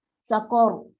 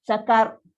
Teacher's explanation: Dan dia punya takrir pun, ra dia pun jadi ra yang tebal. Sebab sebelum dia baris atas.